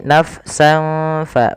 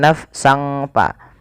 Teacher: Maka suara sinnya ini, suara tanwinnya dimasukkan ke huruf fa. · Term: ikhfa